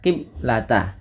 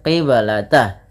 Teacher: ada bacaan qalqalah maka suara bnya harus dipantulkan. Kesalahan yang terjadi di dalam membaca bacaan qalqalah yaitu tidak memantulkan bunyi suara bnya.